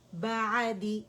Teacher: عین کو جھٹکا نہیں دینا اور بڑا ہی نرمی کے ساتھ ہم نے اسے ادا کرنا ہے